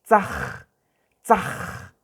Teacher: Entonces hay que raspar un poquito la garganta para pronunciar la letra J.